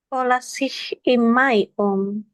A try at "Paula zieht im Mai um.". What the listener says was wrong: Bukan si tapi zit. Paula zit im Mai um.